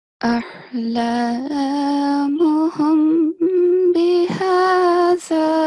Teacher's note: meme sakin should be softly prolonged for 2 seconds, counts or beats with a light nasal sound. So compared to the previous rule, this time the nasal sound is going to be light.